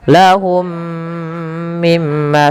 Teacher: Mim yang pertama masukkan mim kedua dan ditahan sepanjang dua harakat. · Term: idgam mimi